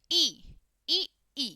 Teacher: दोनों ही ई में जीभ का आगे वाला हिस्सा आता है, तो ई और ई हमारे पास अग्रभाग में आती है।